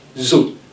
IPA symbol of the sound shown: z